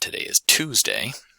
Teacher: you'd be putting the contrast of stress on the word Tuesday to indicate that that's the important information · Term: contrastive stress